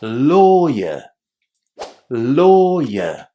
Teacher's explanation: because my accent is British, I don't actually pronounce the letter R in endings like these. This is characteristic of the British accent.